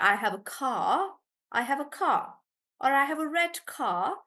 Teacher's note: Do you remember I told you that in British English, we don't pronounce the R